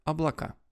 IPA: ɐbɫɐˈka